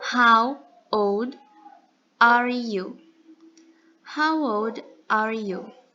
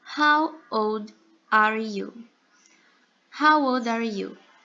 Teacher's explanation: Percebam que a pronúncia do D em old, ela é bem fraquinha, quase inaudível.